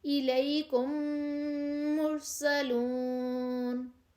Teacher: میم ساکن کے بعد میم آئے تو دونوں کو ملا کر غنہ کے ساتھ مشدد ادا کریں گے، مثلا الیکم مرسلون، اور اس کو ادغام شفوی کہتے ہیں۔